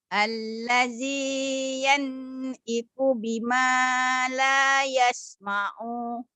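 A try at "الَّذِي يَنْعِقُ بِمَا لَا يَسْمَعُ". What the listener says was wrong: Kenapa panjang? Kalau mau berhenti la yasma'. Kalau mau berhenti la yasma'. La-nya panjang. La yasma'.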